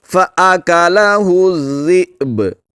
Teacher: حمزہ کو جھٹکا دے کر پڑھیں گے، با پر قلقلہ کریں گے